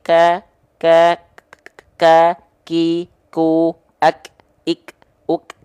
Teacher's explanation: kita hanya lafalkan cukup di percikan nafas saja, bukan mengalir nafas. Ya, bukan mengalir nafas, tapi hanya berupa percikan-percikan nafas saja.